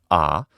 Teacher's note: the open back unrounded vowel is ah